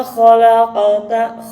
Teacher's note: ada qaf sukun ya. Hukumnya adalah qalqalah sughra. Jadi pantulannya jangan terlalu ditekan.